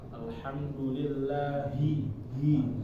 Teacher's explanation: habis itu hi-nya keikutan tipis padahal seharusnya tebal